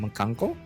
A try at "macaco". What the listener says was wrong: No, there's no N in there.